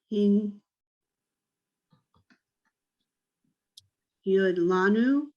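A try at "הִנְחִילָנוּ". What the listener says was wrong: What's before the lanu? Yeah, but it's before the yud. It's a chet. The yud, the e and the yud are the vowel. So it's hin, chi, lanu, chi, chi.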